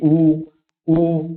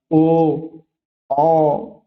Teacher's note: वृत्तमुखी ऐसे वर्ण जिनके उच्चारण करते समय जो आपके होठ है उनका आकार कैसा हो जाता है? गोलाकार हो जाता है।